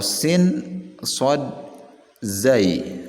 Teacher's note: merupakan makhraj yang keluar dari ujung lidah dan ujung gigi atas dan bawah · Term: Sin, shad dan zai